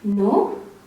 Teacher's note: you'll definitely use a rising intonation to express a little bit of doubt